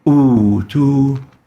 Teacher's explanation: hamza has been exchanged with a waw because of the dhamma on the first hamza to become utu, and should be lengthened for 2 units. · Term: exchanged med